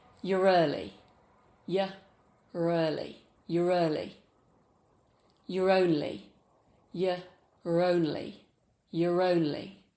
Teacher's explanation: when the next word starts with a vowel, we add a r sound to transition between the two vowels. It's called an intrusive r sound.